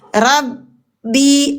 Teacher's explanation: Ada jeda ada karena dia syiddah ada jeda. Jadi ro ke huruf ba sukun yang bertasdid ini ada jeda.